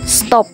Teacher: kata tersebut diucapkan stop dengan T juga laminopalatal. Dengan demikian dapat disimpulkan bahwa T pada stop disesuaikan atau diasimilasikan artikulasinya dengan S yang mendahulinya sehingga sama-sama laminopalatal.